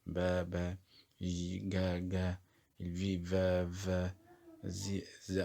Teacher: الاصوات دي في اهتزاز في الاحبال الصوتية